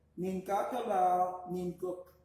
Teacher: you pronounce that N as part of the previous word.